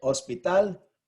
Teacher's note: the last syllable is stressed ends with an L that's not a vowel that's not an